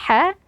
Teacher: huruf ha huruf yang keluar dari tengah tenggorokan